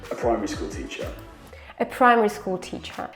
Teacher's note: his voice is going down a little bit, and the stressed word is pri, like the stressed syllable is pri from primary. In the beginning is a schwa, so it's really, really quiet. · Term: main stress